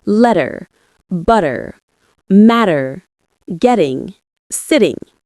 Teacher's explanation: Don't pronounce a hard T sound. Instead, let your tongue quickly tap the roof of your mouth, creating that softer, flowing sound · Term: Flapping, flapping